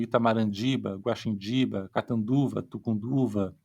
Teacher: nessa língua o t depois de uma vogal nasal se torna ND